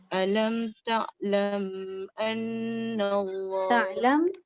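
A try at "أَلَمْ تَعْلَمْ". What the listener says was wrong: Ta'lam tu jangan dengung. Lam yang bertanda mati tak dengung.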